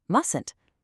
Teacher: When you're speaking to a group, that first T is completely silent. It's just mustn't. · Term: silent T